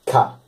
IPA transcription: kʰ